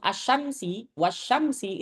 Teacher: Kalau nyebut asyamsi, wasyamsi itu pasti alif lamnya enggak dibacakan